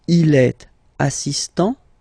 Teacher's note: So don't pronounce the final t here.